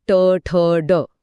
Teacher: जिथे जिभेचा शेंडा पूर्णपणे उलटा दुमडून वर लागतो त्याला मूर्धन्य म्हणतात जसं ट ठ ड >> हा उच्चार करताना जीभ अक्षरशः दुमडते